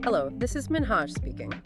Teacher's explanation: Clear, polite, perhaps slightly raising at the end.